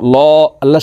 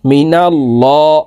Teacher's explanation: মি নুন লাম জবর নাল মিনাল লাম খারা জবর ল আল্লাহ আল্লাহ শব্দের আগের হরফে জবর আছে এই কারণে এই লামকে ল অর্থাৎ মোটা করিয়া পড়তে হবে